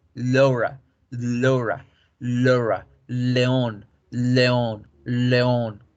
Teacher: En inglés yo debo redondear mi boca como si fuese a hacer una O para decir la L. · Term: sonido de la L